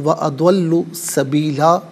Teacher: 2 زبر کی تنوین وقف میں الف سے چینج ہو جاتی ہے